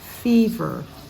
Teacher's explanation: the V sound has a voice not F sound like in Indonesian